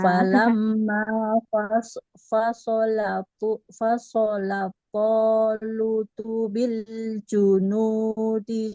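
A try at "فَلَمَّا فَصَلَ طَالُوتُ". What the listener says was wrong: Hati-hati ketika membaca huruf shortnya tebal, jangan membuat huruf fa-nya ikut-ikutan tebal.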